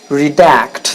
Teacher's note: the second syllable redact it's a verb the stress is on the second syllable that's why is not redact its redact it means to remove